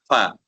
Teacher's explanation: ثنایا الیہ کو ہم نیچے والے ہونٹ کے درمیانی حصے میں لگا کر اس کو ہم پڑھتے ہیں